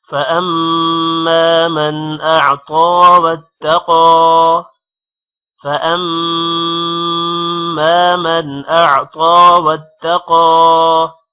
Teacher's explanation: واتقا تا پر شد ہے، تا واو کے ساتھ ملے گا اور ایک بار واو کے ساتھ ملے گا اور دوسری بار الگ سے پڑھا جائے گا، اور قوف پر کھڑی زبر ہے جس کی وجہ سے قوف کو تھوڑا لمبا کریں گے